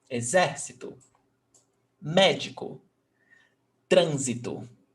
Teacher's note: Exército, 4 syllables. And the stressed syllable is not the last, not the one before last, is the one before that one. So the antepenultimate syllable.